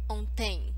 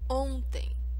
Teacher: The word ontem, the stronger syllable, the stressed syllable, is the first one. It's on. So it should not sound as ontem.